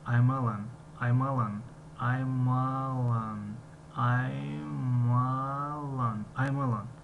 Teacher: яъне I'm alan аст, аммо вақти талаффуз aymalan malan шунида мешавад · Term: linked sounds